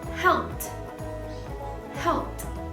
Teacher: So to add ed, the sound of ed is going to sound as t.